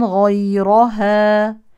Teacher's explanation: من حروف التفخيم وراء مفتوحه تفخم